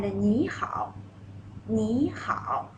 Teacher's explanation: 你 second tone, 好 third tone.